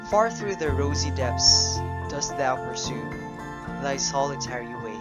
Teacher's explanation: the pattern would be 1 weak syllable followed by 1 accented syllable all throughout the lines. And if we're going to count the number of feet per line, the first one would have 3 feet, therefore it's a tetrameter, while the second line would have 5 feet, hence it's called a pentameter. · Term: iambic pentameter